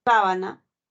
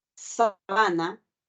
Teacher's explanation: Yo esa palabra polisilábica, porque tiene tres sílabas, se pueden pronunciar de dos maneras, ¿no? Sábana, el acento está en la primera sílaba. Sabana está en la penúltima sílaba. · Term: función distintiva